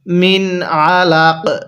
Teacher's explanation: নুন সাকিনের পরে ইজহারে হরফ থাকার কারণে এই নুনটা আমরা স্পষ্ট করে পড়ছি · আমি কিন্তু লামের মধ্যে কোন প্রকার টান দেই নাই